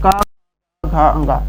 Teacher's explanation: जो का है, का कंठ, एक कंठ से उच्चारण होने वाले सभी वर्ण है।